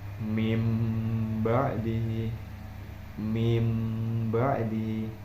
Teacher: Jadi pada hukum bacaan ini cara membacanya adalah menyatukan jadi satu huruf nun dengan huruf ba dengan cara mengganti huruf tersebut dengan huruf mim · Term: iqlab